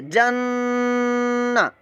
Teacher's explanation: जीम पर हरकत है और नून के ऊपर तशदीद है, हरकत भी है लेकिन नून के ऊपर जो तशदीद आई है इस वजह से हम यहाँ पर गुन्ना करेंगे, नाक के अंदर आवाज़ ले जाएंगे, जन्ना ऐसे।